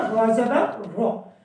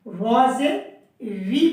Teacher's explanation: را کو زبر کے ساتھ ہم نے موٹا کیا تھا، را زبر رو۔ اب زیر کے ساتھ ہم نے پتلا کرنا ہے، باریک پڑھنا ہے، ری نہیں پڑھنا، را زیر ری پڑھنا ہے چھوٹی سی آواز کر کے۔